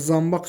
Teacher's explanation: n sözün yazışındadır və tələffüzünə M-ya keçib. Q X-ya keçib. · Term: keyfiyyət dəyişikliyi